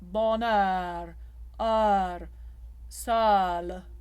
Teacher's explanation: Notice the tip of the tongue just flicking for the L.